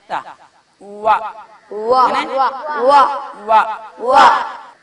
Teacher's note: വാവ് പറയുന്ന സ്ഥലം രണ്ട് ചുണ്ടാണ് വാവിന്റെ മഖറജ്, വാവ് പുറപ്പെടുന്ന സ്ഥലം.